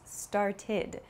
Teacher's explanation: it has an ID sound it's not an ed sound but an ID sound